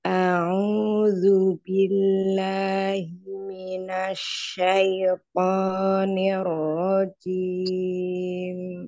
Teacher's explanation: Jimnya hati-hati jangan hames ya